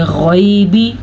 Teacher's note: غین جو ہے حروف مستعلیہ میں سے ہے تو غین کو موٹا کر کے پڑھیں گے